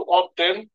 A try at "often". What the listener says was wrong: আমরা অফটেন বলবো না, এটা উচ্চারণ হবে অফেন। অফেন। অফেন, হ্যাঁ। না, না, অফটেন বলি না, আমি বলছি অফটেন হবে না। এটা এখানে টি।